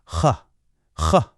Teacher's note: This sound comes from the very, very back of your throat. It's kind of like the sound you make when you're lightly gargling or just gently clearing your throat. It's got this little bit of a rasp to it.